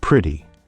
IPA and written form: ˈprɪɾi (pretty)